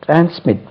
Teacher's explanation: Second syllable is to be accented